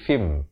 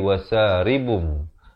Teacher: ditukarkan bunyi Nun itu fine itu kepada bunyi mim jadi fim dengan kadar panjang 2 harakat bibir itu sekedar bersentuhan atau hampir bersentuhannya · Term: hukum iqlab